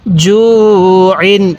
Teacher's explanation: তানবিনের উচ্চারণ বাংলায় দন্তান্য উচ্চারণ হবে আমরা বাংলায় যেমন শব্দ শেষে দন্তান্য উচ্চারণ করি এই তানভীনের উচ্চারণটা